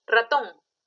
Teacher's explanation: la mayor fuerza de voz está en la sílaba ton. Le puse tilde en la O porque termina en N. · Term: sílaba tónica